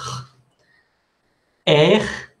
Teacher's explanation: L'air, air, esta es la representación fonética de la R francesa. Recuerde, como haciendo gárgaras.